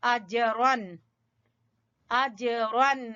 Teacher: जीम के ऊपर हल्का कलकला होगा